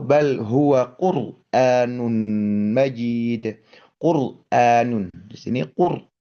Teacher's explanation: R sukunnya didahului oleh domahnya huruf qof misalkan. maka ro sukun ini menjadi tebal